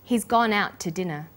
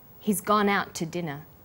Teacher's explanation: we stress he gone out and dinner the two is unstressed when we link out which is stressed and to which is unstressed the final T sound in out is held slightly longer